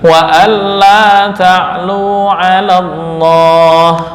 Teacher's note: ketika wasal atau bacaannya lanjut ya, alif maksurah dan hamzah wasal di sini enggak terbaca. Alallah enggak boleh dipanjangkan alallah.